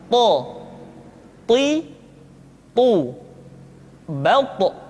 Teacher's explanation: ketika to diucapkan, suara kita terdengar menebal. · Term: huruf to